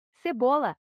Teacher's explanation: cebola a sílaba tônica é a penúltima portanto é uma palavra paroxítona máquina a sílaba mais intensa é